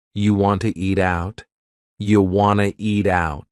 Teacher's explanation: we have reduced want to to become Wana